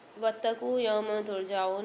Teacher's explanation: قاف کے ساتھ واو ساکن آ رہی، تو یہاں پہ ایک الف مدار قاف کو کھینچیں گے اور میم کے اوپر دو زبر کی تنوین کے بعد تا آ رہی ہے، یہاں پہ فمال غنہ والا قاعدہ غنہ کر کے پڑھیں گے۔